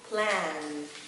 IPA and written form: plæn (plan)